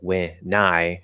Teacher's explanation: There's no division between the N and the I.